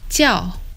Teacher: This word meaning call is pronounced in Mandarin as 叫 with a falling tone. In Cantonese, it's 叫 with a mid-flat tone.